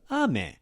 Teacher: say the word for rain, it's ame. It's higher than lower